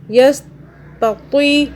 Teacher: ہم نے یہاں پہ کہاں کھینچا؟ یستطیع، یہ جو تو ہے اس کے آگے حروف لین ہے، یا آ رہا ہے، تو ہم نے تو کو ہلکا سا کھینچا